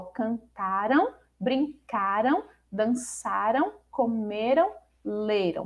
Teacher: Com a terminação an, as formas verbais são paroxítonas, tendo a penúltima sílaba como sílaba tônica.